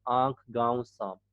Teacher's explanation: अनुनासिक का उच्चारण आप लोगों का नाक और मुंह के द्वारा किया जाता है, दोनों के साथ